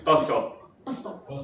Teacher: So it actually becomes something like bus top, right, in casual fast speech